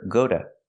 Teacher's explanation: But after go, the T is between vowels, so you hear duh. Together, go to.